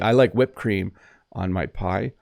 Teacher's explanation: you might hear someone say whipped cream without pronouncing the ED. This is technically incorrect, but we do say it.